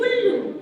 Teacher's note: उल्लू बोलने में उ बोलने में थोड़ा कम समय लगा है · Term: छोटा उ